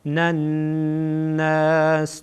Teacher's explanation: نون با نون دیگه یک جا وصل میشه و نون در اینجا نون الناس غنه میشه